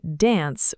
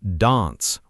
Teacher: Americans keep that flat A, British speakers stretch it out.